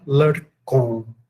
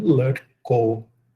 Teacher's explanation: O vocativo plural de todos os substantivos corresponde à forma oblíqua, só que sem a nasalização.